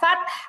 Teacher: ফাতেহ না, ফাত কলকলা নেই তার মধ্যে। ওয়াল ফাত, والفتح আর অল হবে না, ওয়াল ওয়াল ওয়াল ফাত। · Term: হা সাকিন